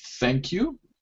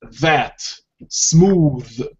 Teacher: same rule yeah like the th the two different th sounds one is unvoiced thank you and the second one is voiced it vibrates if you can hear it um that smooth and so on · the only difference between them is that the first is unvoiced and the second is voiced